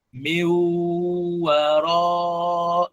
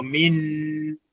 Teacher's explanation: Meu, na wala sio min. Isisikike sauti ya nun hapo. Kinachosikika hapo ni sauti ya wau, alafu unanung'unika meu waraihim, na wala sio meu wara kapita mbio. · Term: idgham